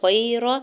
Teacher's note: یا ساکن سے پہلے غین کے اوپر زبر ہے تو یہاں پر بھی یا لین ہو رہا ہے، بغیر کھینچے ہوئے نرمی سے موڑتے ہوئے ادا کریں گے۔